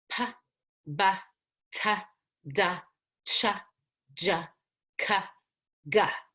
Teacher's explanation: So with P, I let my two lips come together, pa. When the two lips come together, they stop the air and then they let the air out.